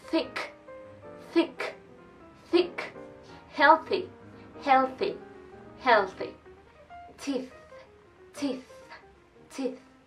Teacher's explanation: Este sonido no produce voz. La lengua va posicionada entre los dientes y se saca aire.